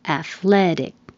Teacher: And if it's athletic, the stress moves to the second syllable.